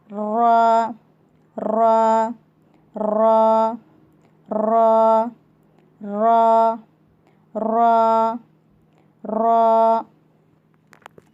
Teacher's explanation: रा ज़ुबान की नोक की पीठ को ऊपर के दांतों की मसोड़ों को लगाने से रा निकलता है।